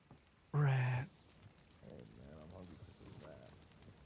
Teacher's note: I want you to say rat in kind of like a breathy suggestive way. Like you're so hungry for it. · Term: breathy voice